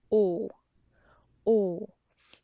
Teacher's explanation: But try to remember, English O is quite similar but different than Korean O. Korean O, it's simple, short, and clear. The sound does not change from the beginning till the end.